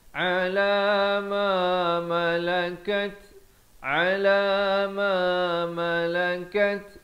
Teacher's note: Ma yang pertama 2 harakat. Ma yang kedua 1 harakat.